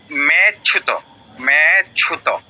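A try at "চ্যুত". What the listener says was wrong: আচ্ছা মেয়েটা ঠিক আছে, কিন্তু এই লুপ্ত এর পরেরটা কিন্তু ঠিক নেই। চয়ের সাথে ইয় ফলা কি হবে? চিয়, চিয়। এর সাথে দীর্ঘ উকার চিউ, চিউত, মে চিউত।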